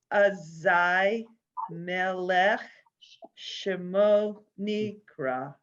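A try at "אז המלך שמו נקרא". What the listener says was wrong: Perfect. Good.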